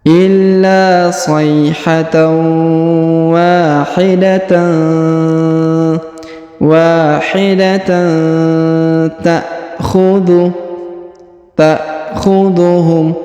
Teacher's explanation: tanwin an bertemu dengan ta huruf ta ya, berwarna hijau di sini, maka didengungkan dan disamarkan